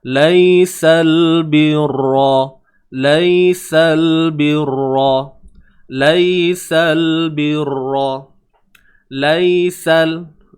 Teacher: Kemudian ya yang bertanda sukun, ya yang bertanda mati, lai. Kat sini kita sebut bacaan lunak, bacaan lembut.